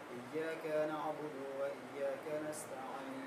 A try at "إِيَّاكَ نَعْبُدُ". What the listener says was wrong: इय्याक में थोड़ा सा खींचा, नहीं खींचे।